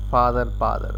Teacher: So this O is merged with A, like in father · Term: Father, bother, merger